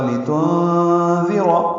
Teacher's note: نون ساکن کے بعد ذال آنے کی وجہ سے اخفا ہوگا، لتنذر، ذال باریک ہے، را پر ہے۔